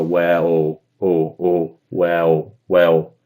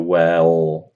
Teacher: I think you're probably doing a bit of a kind of biquinho with your lips in the shape of like a oo or o sound. And probably your tongue is not pulling back towards the throat in the way that mine does.